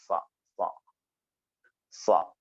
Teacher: ചുണ്ടിനെ അതിൽ ഉൾപ്പെടുത്തരുത് സ്വാദ് ഉച്ചരിക്കുമ്പോൾ അതിന്റെ മഹ്റജ് നമ്മൾ ഇൻഷാ അള്ളാ പറയും നാവിന്റെ അറ്റവും താഴെയും മേലെയും ഉള്ള മുൻപല്ലുകളുടെ ഇടയുമാണ് സ്വ സ്വ സ്വ വരുന്നത് സ്വ അത് ഒന്ന് ഇസ്തിലാന്റെ അക്ഷരം കൂടിയാണ് സ്വ അതുകൊണ്ട് അതിനെ ഒന്ന് കനപ്പിച്ച് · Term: സാദിന്റെ മഖ്റജ്